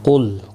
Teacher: قاف مستعلیہ ہے، پر پڑھا جائے گا، لام ساکن کو ہلانا نہیں